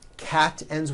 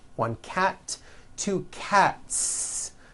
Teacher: cat ends with an unvoiced T TT one cat two cats again the s ending is unvoiced